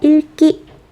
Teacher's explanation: 리을 기역 겹받침 뒤에 기역이 올 때에만 리을로 발음된다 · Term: 겹받침 리을 기역